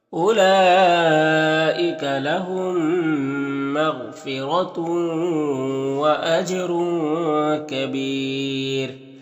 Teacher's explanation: जिम में कलकला होगा और रॉ को पुर पढ़ेंगे, और इस तनवीन के बाद काफ है हरूफ इख्फा में से, तो इख्फा होगा। और यहाँ पर वक्फ करेंगे तो रॉ का पेश सुकून से बदल जाएगा, तो फिर रॉ को बारीक पढ़ेंगे और मद्दे आरिज वक्फी होगा · तो तनवीन को वाव से मिलाकर गुन्ना के साथ में पढ़ेंगे, इसको इदगाम नाकिस कहते हैं।